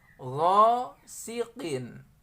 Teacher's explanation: Mengejahnya ghain, alif, wa fathah, gha, ya, dibaca panjang. Gha, 2 harokat, ya. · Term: mad tabi'i